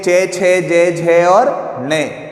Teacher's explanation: यदि हम इस वाली लाइन को बोलते हैं चे, छे, जे, झे और ने, तो यहाँ पर हमारी जो जीवा है, हमारी जो जीवा है वो हमारे तालु को स्पर्श करती है